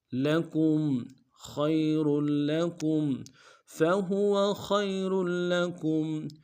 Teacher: خا کو یا کے ساتھ ملانا ہے، خا موٹا ادا کریں گے، یا لین بغیر کھینچے پڑیں گے